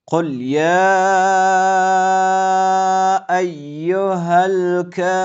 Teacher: بعدا در اینجا های دو چشم آمده که از آخرین قسمت حلق تلفظ می شود، با لام ساکن وصل شده و را متوجه باشید که پر و سنگین ادا کنید. · قاف پیش دارد که بالام ساکن وصل می‌شود دقیق باشید که لام ساکن را حرکت ندین · وصل می‌شود دقیق باشید که لام ساکن را حرکت ندین بعداً یا بالای الف ایستاده یک مد آمده که اندازه سه الف شش حرکت کشف میشود